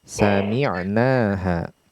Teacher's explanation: Hati-hati jangan ada qalqalah, langsung sami'na